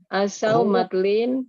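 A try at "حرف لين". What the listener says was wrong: sekali lagi bukan matlin, huruf lin. Iya betul, harfulin.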